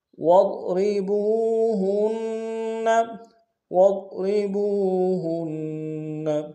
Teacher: ضاد کو موٹا ادا کریں گے، را کو باریک ادا کریں گے